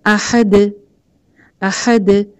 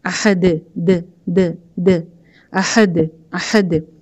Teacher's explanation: جیسے احد، احد. اب د یہ ایک سیکنڈ میں زبان وہاں لگتی ہے دال کے مخرج پہ، یعنی کہ اوپر کے دو دانتوں پہ، ایک سیکنڈ کے اندر ہی ہٹ جاتی ہے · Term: قلقلہ